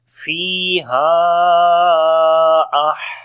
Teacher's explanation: On the ha we make hams quality, the continuation of our breath.